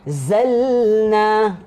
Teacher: Kita boleh lama-lama sebab kita kena baca dengung.